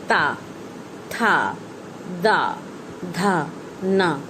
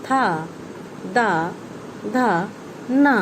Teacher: इनका उच्चारण करते समय जीभ दांतों को छूती है